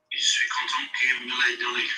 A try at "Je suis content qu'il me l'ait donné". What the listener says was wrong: That's it. But you still went peak. We had Everest in the middle. Don't show off the subjunctive.